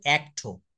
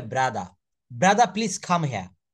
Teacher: ওয়ার্ডের শেষে আর থাকলে ব্রিটিশরা কোথায় আর এর উচ্চারণ করে না